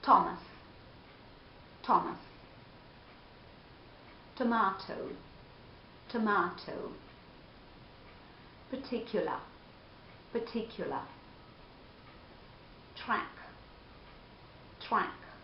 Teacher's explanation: In initial position and before vowel sounds, you will hear a very clear and strong t sound, whereas in final position or before a consonant, you will hear a weaker t sound. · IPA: /t/